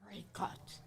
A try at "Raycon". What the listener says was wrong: Ray. Not Cuts. Con. Con. Con. Ray. Con. Raycon.